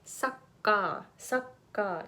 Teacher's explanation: if you say sucka sucka you're using the schwa sound which makes it sucker so please be careful so the difference is in the depth